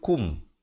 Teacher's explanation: Kaf baris depan. Bunyi ku, bukan bunyi ko.